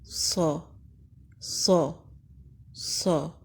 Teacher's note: صاد حروف مستعلیہ میں سے ہے، یعنی بلند اور موٹا پڑھتے ہیں۔ زبان کا پچھلا حصہ اوپر اٹھتا ہے جیسے کہ پکچر میں نظر آ رہا ہے، جس سے موٹی اور بلند آواز آتی ہے صا صا صا۔